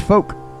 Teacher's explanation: You do not pronounce the L in folk.